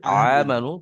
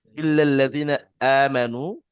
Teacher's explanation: হামজা একদম মুখের গলার শুরু ভাগ থেকে